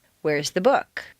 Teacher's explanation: The first is stressed on the most common everyday word, book. 9 times out of 10, people will stress the sentence in this way.